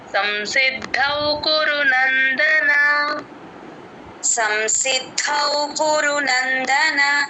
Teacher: ఉంది ఇక్కడ సంసిద్ దౌ సి కి ద ని జాయిన్ చేసి ద ప్లస్ ఔ దౌ వినిపించాలి